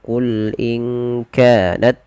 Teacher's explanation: lafal lam tidak boleh memantul ya jangan sampai qulat misalkan seperti itu ada kadang-kadang dia memantulkan